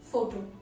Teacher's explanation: you're putting the stress on the first syllable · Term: word stress